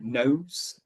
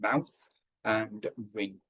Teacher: And all a nasal sound is is the air movement is blocked and it comes out through your nose. So it doesn't leave the mouth and it has to leave somehow.